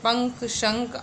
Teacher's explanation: अनुस्वार, इसका उच्चारण नाक से होता है, ये न या माँ के समान होता है